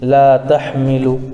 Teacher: الف سے پہلے لام کے اوپر زبر ہے، اس لیے الف مدہ ہوگا، ان کو تھوڑا کھینچ کر پڑھیں